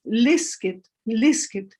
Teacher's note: the stress is on the prefix not on the root